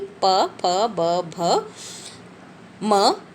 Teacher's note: ये होठों का स्पर्श करते हैं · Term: प वर्ग